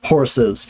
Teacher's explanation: we add a schwa, an unstressed vowel in between and do the Z because the schwa itself is a vowel